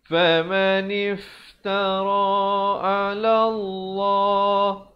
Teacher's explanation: Lafzul jalalah dibacakan tebal kerana datang sebelumnya baris fathah dengan dua harakat.